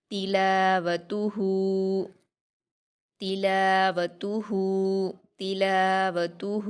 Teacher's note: ہا پر الٹا پیش ہے، اس کو واو مدہ کی طرح 2 حرکات کھینچ کر پڑھیں گے۔